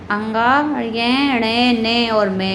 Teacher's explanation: प्रत्येक वर्ग के अंतिम वर्ण अंगा, य, ण, न और मे को अनुनासिक भी कहा जाता है, क्योंकि इनका उच्चारण मुख के साथ नासिका से भी होता है